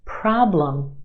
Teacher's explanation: our first syllable is emphasized the ah problem is stretched and emphasized in the first syllable our second syllable is where you have your schwa problem problem